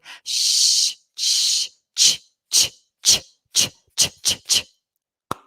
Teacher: With the the ch, it's it's slightly posllosive, so you have a slight explosion of sound, but it's also slightly fricative, so it's a continuous vibrating friction sound